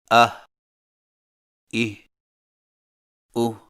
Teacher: ہا حلق سے بغیر رگڑ کھائے ادائیگی کے وقت زبان کی جڑ کو حلق کی طرف دبائے بغیر ادا کریں